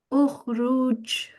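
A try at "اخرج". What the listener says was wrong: Okay, so what you're doing, you're saying ukhruj, but that sound has to carry on for a little bit after you've said it. So it sounds like this. Not ukhruj, but ukhruj, like a bouncing sound. Ruj.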